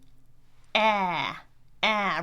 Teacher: Front vowel. Again, your tongue is in the front. Your jaw is all the way open. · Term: famous American sound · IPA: /æ/